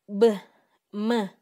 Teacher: өпкөдөн чыккан аба үн менен шыбыш кошулуп, кош эриндин тоскоолдугуна учурайт. Башкача айтканда, астыңкы эринибиз менен үстүңкү эринибиздин тоскоолдугуна учурайт.